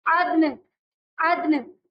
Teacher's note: ٹھیک ہے. آیت عدن اس کے اندر دال پہ ہمیں قلقلہ بھی کرنا ہے اور لاسٹ میں نون کی آواز ہمیں ہلکی سی ضرور واضح کرنی ہے